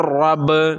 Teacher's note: را کو پر پڑھنا ہے، باریک نہیں، کیونکہ آپ نے پڑھا کہ را کے اوپر جب زبر یا پیش ہو تو را کو پر پڑھا جاتا ہے، موٹا پڑھا جاتا ہے۔